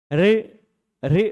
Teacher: रे बोलने में जीभ ऊपर की ओर मुड़ती है, वो जहां पर मुड़कर जा रही है, टच तो नहीं कर रही है ऊपर, पर फिर भी वहीं से हवा को निकलने दे रही, इसलिए उसको, उस स्थान को मूर्धा कहा जाता है।